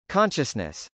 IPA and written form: kˈɑnʃəsnəs (consciousness)